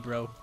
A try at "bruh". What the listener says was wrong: It's not even bro, it's bruh.